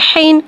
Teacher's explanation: हा को एक अलिफ यानी 2 हरकत के बराबर खींच के पढ़ेंगे। हा में हवा को ज़ाहिर करके पढ़ेंगे।